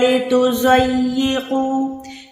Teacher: تا باریک ہے، زود موٹا ہے